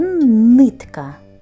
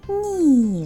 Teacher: звук н ми можемо вимовляти твердо як у слові нитка Але можемо вимовляти м'яко як у слові ні